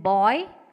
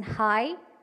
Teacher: these are the diphthong sounds that the sound second vowel is closer than the first vowel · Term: closing diphthong